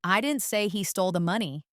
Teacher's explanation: Here, stressing didn't implies that someone else said it, not me.